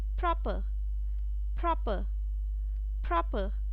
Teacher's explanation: though the lips will be closed when you're going to pronounce the letter P, however the air is not going to be expelled out. Air will not be moving out of your mouth with a puff.